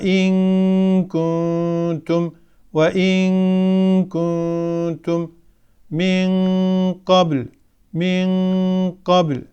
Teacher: bu görsellerde olduğu gibi dil Kaf ve kef harfinin mahrec de ağız boşluğunu kapatıp sesin gelmesine mani olduğu için gunne sesi sadece genizden hayşum gelmektedir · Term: ihfa